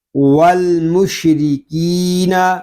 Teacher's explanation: را کو باریک پڑھیں گے، را کے نیچے زیر ہے · کاف کو ہم ایک الف تک کھینچ کر پڑھیں گے کیونکہ یہاں پہ یا مدہ ہو رہا ہے